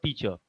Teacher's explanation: Now see, if I say teach here, look at the word teacher. The word teach is stressed, but not er.